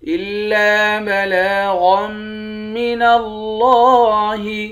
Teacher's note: یہاں پر لام پر کھڑا زبر ہے، اس کو ایک الف کی مقدار کھینچ کر پڑھتے ہیں۔ غین کو میم کے ساتھ ملا کر یہاں میم مشدد پر غنہ کریں گے، غین کو موٹا پڑھیں گے۔ الا بلاغا من اللہ، لفظ اللہ کے لام کو موٹا پڑھیں گے۔